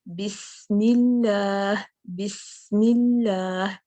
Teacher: अगर हम कहें बिस्मिल्लाह, बिस्मिल्लाह, ठीक है, हम अदा तो कर रहे हैं सीन को सुकून के साथ, लेकिन हम्स जो है वो अप्लाई नहीं हुआ। हम्स को अप्लाई करने के लिए सीन के ऊपर चूंकि सुकून है, तो हमें थोड़ी देर इसको जारी रखना है, इस आवाज को। बिस, ये जो हम्स है ना, बिस कितना जारी रखना है, जब तक कि आप मीम पर नहीं आ जाती।